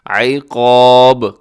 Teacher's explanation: قاف موٹا، با قلقلہ کریں گے وقف کرتے ہوئے